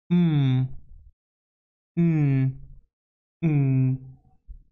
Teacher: Then here we have nasal. The mouth is closed, so the air passes through the nose. We can find the sounds m, n, n.